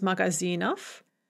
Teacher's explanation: and we just add off and note how we write but we are going to pronounce it off because it is at the end of the word and therefore there is devoicing